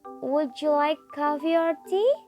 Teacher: The usual intonation is a rise on the first part like coffee and a fall on the second part like tea.